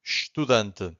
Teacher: the only thing that you can hear from the first syllable it's a sh